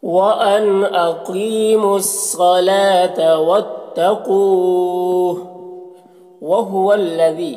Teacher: یہاں پر جو مد ہے یہ مد منفصل ہے، اسے 3-4 الف کے برابر کھینچ کر پڑھتے ہیں، اور ایک الف کے برابر بھی کھینچ کر پڑھ سکتے ہیں۔